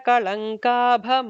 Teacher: the kabha would be a second bha, so there has to be an extra emphasis on it. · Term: Mahaprana